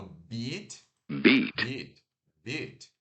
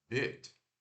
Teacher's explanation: E esse som aqui de mordida, né, é o B normal, o I curto e o T. Então, ó, o I curto é aquele que a gente não sorri, e também é curto